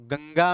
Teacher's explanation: गंगा में अनुस्वार का उच्चारण, अनुस्वार का उच्चारण अंगा है